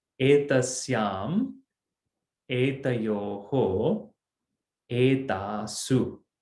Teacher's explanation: You don't get that shu, you get the su. It's a little softer in the feminine.